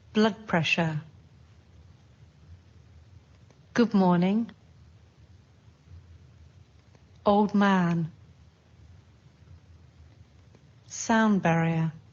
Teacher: D sounds more like b.